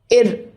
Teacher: நாக்கோட நுனி அன்னத்தோட நுனியை ஒரு வாட்டி தட்டி கொஞ்ச நேரம் தடவும். அப்போ சின்ன அதிர்வு ஏற்படும். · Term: வருடொலி